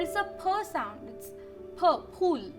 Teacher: in Marathi, there is no f sound. It's not a f. It's not a f like English for fan, but it's a p sound. It's p, pool.